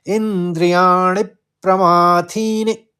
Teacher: थी बड़ा होगा दीर्घ और नी जो है छोटी इ की मात्रा है तो हस्व बोलेंगे उसको · इंद्रियाणि, अणि के ऊपर आघात है तो प का आघात लेते हुए इंद्रियाणि प्रमाथिनि, प्रमाथिनि, थी बड़ा होगा दीर्घ, और नी जो है छोटी ई की मात्रा है तो ह्रस्व बोलेंगे उसको